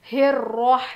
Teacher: रॉ की आवाज़ में जब पढ़ते हैं ना तो थोड़ी सी तकरार होती है, जैसे कि हेर रॉ, ऐसे डबल साउंड, जैसा एक दूसरे से टकराती है आवाज़, इस तरह से आवाज़ आएगी।